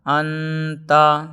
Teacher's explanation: تنوین یا نون ساکن کے بعد حروف اخفاء آئیں تو نون کی آواز کو ناک میں چھپا کر پڑھنا چاہیے، نوک زبان تالوں سے ہٹا کر، جیسے اردو میں پنکھا کے نون کو پڑھتے ہیں۔ اخفاء کی مقدار 1 الف ہے۔